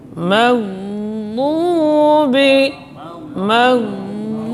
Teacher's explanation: Tekanannya dari salah satu sisi lidah menempel pada geraham atas. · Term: dad